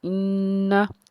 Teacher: क़ालू, हमज़ा नून से इन, नून ज़बरना, इन्ना, नून मुशद्दिद है, खूब जमाओं के साथ हमने गुन्ना करना है